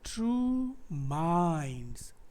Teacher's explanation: तो ट्रू unstressed syllable है, माइंड्स stressed syllable है, राइट।